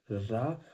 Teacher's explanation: लुंठित, लुंठित व्यंजन। पहले जीभ मूर्धा के पास रहेगी, टच नहीं करेगी, रा, और फिर जैसे रा होता बोलते हैं, रा की ध्वनि निकलती तो जीभ नीचे होती है और ध्वनि बाहर निकलती है।